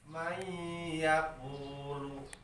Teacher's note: Nun sukun ngarepan iya hukumna idgham. Sora nun diasupkeun kana iya sehingga teu katampo nunna teu kadenge. Gitu. Bari idghamna idgham biguna hartina dengung kara irung.